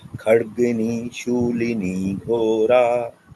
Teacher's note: So I heard the Mahaprana ka in Khadgini, but not as much in Ghora. So Ghora, we have the Mahaprana Gho instead of Go. Okay, so you can just pronounce that a little bit more like the Mahaprana.